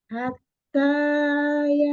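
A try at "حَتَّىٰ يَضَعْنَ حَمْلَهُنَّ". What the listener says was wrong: Jangan kepanjangan matobi'inya.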